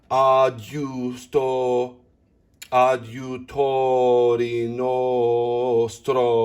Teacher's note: So stro is flipped and you round the lips and then you observe that tied eighth note.